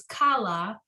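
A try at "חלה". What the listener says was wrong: This last word is chala, right? It doesn't have the dot in it.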